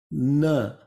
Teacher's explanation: which is produced at the dental and the sound will come through the nose